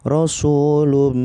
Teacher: Ditahan juga, satu alif dua harokat. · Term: idgham bi gunnah